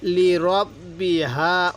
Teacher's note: এই হাটা উচ্চারণের সময় মুখ দিয়ে হালকা বাতাস বের করব